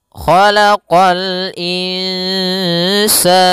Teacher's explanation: huruf kha pangkal lidah kita terangkat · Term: isti'la